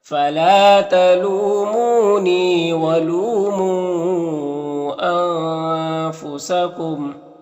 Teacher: तलू लू में वाव मद्दा है, मुँह में भी वाव मद्दा है, और नी में या मद्दा है, ये सबको एक अलिफ के बराबर खींचेंगे। · यहाँ पर लू में वाव मद्दा है, मुँह में जो मद है मद मुनफसिल है। यहाँ पर नून में इख्फा होगा